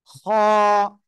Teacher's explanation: শেষ ভাগ গলার শেষ ভাগ থেকে আমরা এই অক্ষরটা উচ্চারণ করব খ এক আলিফ টান হবে মোটা আওয়াজে